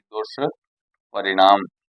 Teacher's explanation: जो दंत्य स है वो मूर्धन्य स में बदल जाएगा।